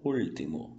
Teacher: Unha e último é que vai mudar porque o Lzinho, lembra? O L tem som de L. Então, língua no céu da boca